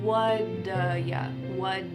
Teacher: That t at the end of the word what is going to change to a d sound. · This is really typical of American English, where a T that's surrounded by vowel sounds is going to change to a D.